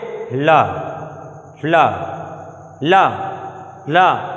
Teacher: जब ला बोलते हो तो जीव के ऊपर वाले दोनों साइड से हवा निकलती है, जीव के दोनों साइड हिस्सों से हवा निकलती है ला बोलने पर, सही तरीके से उच्चारित करने पर। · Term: पार्श्विक वर्ण